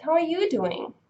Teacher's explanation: if you want to answer with the same question, then you need to emphasize you